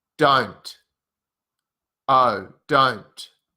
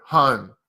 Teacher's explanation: the O sound in Australian is more open and wider oh the the mouth the jaw drops a bit lower oh